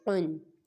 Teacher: قاف دو زبر قن، قاف دو زیر قن، قاف دو پیش قن، یہ قاف حروف مستعلیہ میں سے ہے، اس کو پر پڑھیں گے